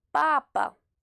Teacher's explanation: C'est le premier A qui est accentué, donc on dit papa.